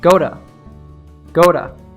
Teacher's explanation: it is very common for natives to pronounce to as a quick duh when preceded by a stressed vowel sound